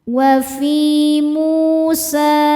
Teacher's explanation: Sebab ada wau sukun. sebelumnya baris domah. Cara bacanya panjang dua harakat. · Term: mad thobi'i zohiri